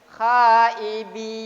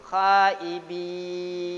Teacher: Harusnya tidak boleh dimatikan terlebih dulu, matnya dulu dihabiskan, baru non sukunnya diterapkan gitu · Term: huruf mat